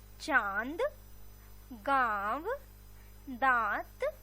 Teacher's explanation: इसके उच्चारण में नाक और गले दोनों का प्रयोग होता है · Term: चंद्र बिंदु